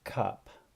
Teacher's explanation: it's similar to the schwa but a little bit stronger a little bit further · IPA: /ʌ/